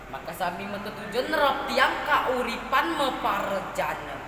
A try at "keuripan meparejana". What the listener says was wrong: Keuripan meparejana, jangan kauripan.